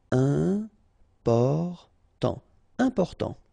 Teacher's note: you've got this EM, and after that it's a consonant, so it is here nasal.